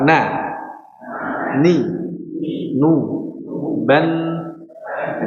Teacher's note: makhrajnya setengah dari lidah setengah dari hidung ya setengah lidah setengah hidung makhrajnya dan huruf nun ini memiliki sifat tadi ya bainiah atau tawas setengah mengalir ya dialiri sedik sedikit sebagian.